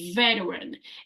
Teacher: we don't need to pronounce the T in veteran